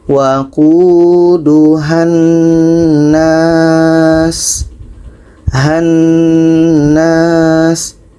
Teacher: panjangnya hilang, yang tinggal dengung saja karena dengung nun tasydid atau syaddah. Oke, jadi ha ini pendek karena bersambung dengan huruf yang bertasydid.